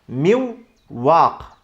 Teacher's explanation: özellikle Wow harfinde ve y harfinde daha da çok genizden sesin gelmesine dikkat etmemiz gerekiyor · ardından gelen harfi şeddeli okuyacağız ve aynı zamanda genizden de sesin gelmesini sağlayacağız